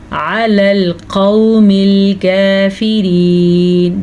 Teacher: عین کا مخرج واضح کریں قاف کو پر پڑھیں